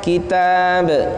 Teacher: Kitab ta panjang satu alif. Perhatikan qalqalahnya.